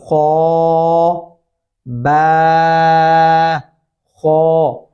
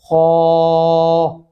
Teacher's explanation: मोटा और पुर करके पढ़ेंगे, होंठ थोड़े गोल शेप में आ जाएंगे।